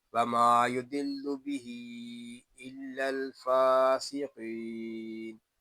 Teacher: लाम मुशद्दद है, लाम को बारीक पढ़ेंगे। हा के नीचे खड़ा ज़ेर है, हा को हम खींच कर पढ़ेंगे क्योंकि यहाँ मद्दे मुनफसिल हो रहा है। · मीम को एक अलिफ तक खींच के पढ़ेंगे क्योंकि यहाँ अलिफ मद्दा हो रहा है।